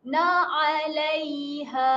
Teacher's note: Ha ini ha lembut, ha biasa kita lepaskan sahaja dari pangkal kerongkong.